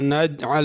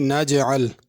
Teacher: جیم پہ قلقلہ کرنا ہے، یعنی تھوڑا سا اس کو ہلا کے پڑھنا ہے۔ نجعل نہیں، نجعل۔